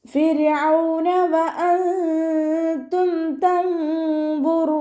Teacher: റ സുക്കൂനാണ്, കൽക്കലയുടെ ലെറ്ററില്ലാത്തത് കൊണ്ട് ഹാഫ് സുക്കൂന് കൊടുക്കുക. റോയിനെ നമ്മൾ താഴ്ത്തിയാണ് ഇവിടെ ഉച്ചരിക്കേണ്ടത് കേട്ടോ.